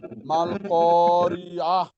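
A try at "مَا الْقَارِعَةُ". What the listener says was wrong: মাশাল্লাহ সুন্দর হইছে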